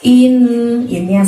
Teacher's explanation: Di situ ada nun tasydid, berarti bacaan gunnah dan kita harus tahan selama 2 harokat